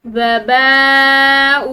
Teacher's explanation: با کے بعد حمزہ پر یہ مد ہے، ٹھیک ہے، تو با کو کھنچاؤ کے ساتھ لمبا کرتے ہوئے پڑھیں گے